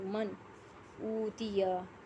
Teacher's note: من اوتیا، نون ساکن کے بعد حمزہ حروف حلقی میں سے آ رہا ہے، اظہار ہوگا، نون کی آواز کو ظاہر کر کے پڑھیں گے۔ من اوتیا، واو مدہ ہے، ایک الف کے برابر کھینچ کے پڑھنا ہے